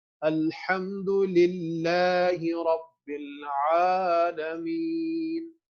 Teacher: تو جب کھڑی زبر آتی ہے تو وہ مد کی شکل میں آ جاتی ہے, اور مد میں لانگیشن کرنی ہوتی ہے یہاں پر. سو اس کو للہ ہی نہیں پڑھنا, الحمد للہ, للہ لٹل بٹ لانگ کرنا ہے